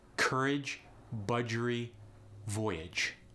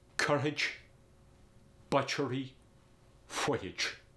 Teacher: The J sound goes to the ch sound.